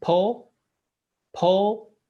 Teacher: try to say po but cut the ooh at the end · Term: closed o